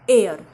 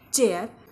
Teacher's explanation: एअर एअर म्हणजे हवा इथे ए आय चा ए अ असा उच्चार होतो ए अ र एअर हेअर H ए I R हेअर हेअर